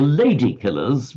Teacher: Lady killers equal stress but the lady killers with stress on the first one would mean the killers of of ladies.